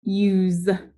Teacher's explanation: Again, it makes the Z sound. The S makes the Z, which is voiced, so we cross it out.